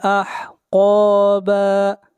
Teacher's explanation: قاف کو موٹا پڑھیں گے، قاف حروف استعلاء میں سے ہے